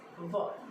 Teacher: while saying V, our teeth, upper teeth touches our lips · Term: sound of V